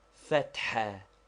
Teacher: Fatha, to be pronounced with a roughly aspirated ha, which we have indicated by a dot under it, and which is somewhat like HH or doubly strong H.